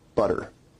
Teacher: notice where we write it with two T's in English that your tongue is producing a tap sound there rather than a full stop or plosives sound